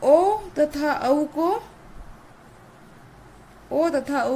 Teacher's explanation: ओ तथा औ को अल्प वृत्ताकार स्वर कहते हैं।